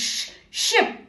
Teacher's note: अपने होठों को थोड़ा बाहर निकालें जैसे ओ शेप और हवा को बाहर धकेलें, किसी को चुप करा रहे हो जैसे शिप।